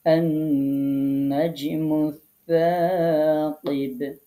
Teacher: এখানে আমরা লামটাকে কিন্তু বাদ দিয়েছি, আমরা সাটাকে পড়ছি, লামটাকে পড়ছি না। মূলত এটি হচ্ছে হরফে শামসিয়া হওয়ার কারণে আমরা আগের লামটাকে বাদ দিচ্ছি।